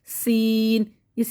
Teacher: سین، سیٹی رہے گی، زبان منہ کے اندر رہے گی